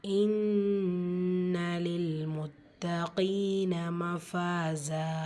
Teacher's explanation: கீன யா மத்தா இரண்டு ஹரக்கத் அளவு நீட்டம் கொடுத்து ஓதணும் · இன்ன நூன் முஷததா குன்னா செஞ்சு ஓதணும் லில் லம் கிஸ்ரா லாம் லில் முத்தீன தால சத்தா இருக்கு அழுத்தம் கொடுத்து